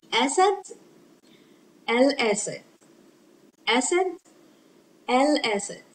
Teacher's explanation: it is lam qamariya, a moon lam, a pronounced lam, because it is followed by the one of the moon letters, Alif.